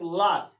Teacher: पार्श्विक व्यंजन ला होता है, पार्श्विक ला, यानी जिह्वा को घुमाकर पीछे ले जाता है और ऊपर के सिरे में छिपाते हुए उच्चारण किया जाता है। यानी जो ऊपर का तलुआ है उसमें घुमाकर जिह्वा को जब पास स्पर्श किया जाता है पिछला भाग, उसको हम ला कहते हैं।